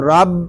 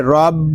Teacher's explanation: را با زبر رب، را کو با کے ساتھ ملائیں گے، آگے با مشدد ہے، اس کو جماؤ کے ساتھ ادا کریں گے